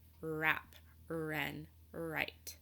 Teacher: not make a sound when WR are connected in a word instead of hearing the W sound we only hear the sound made by the R